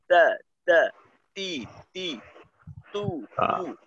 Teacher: যখন আমরা জের জবর জের পেশ দিয়ে পড়বো, তখন যেন তার উচ্চারণে বাতাস বের না হয়